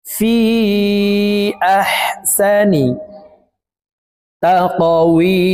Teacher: ফি এখানে 3 আলিফ টেনে পড়ব, কারণ মদের হরফের উপরে চিকন চিহ্ন বামে হামজা, মধ্যে মুনফাসিল 3 আলিফ টানিয়া পড়িতে হয়।